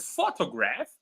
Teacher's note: in the word photograph, it's the first syllable that is stressed